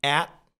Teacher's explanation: on peut dire aussi at, tout simplement, sans prononcer le T à la fin